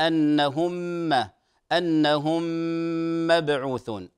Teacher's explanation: ادغام مثلين صغير مقدار حركتين